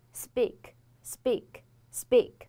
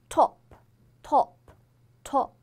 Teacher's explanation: 这样一些送气的清辅音，在这种时候它只是变得不送气了，并不是浊化了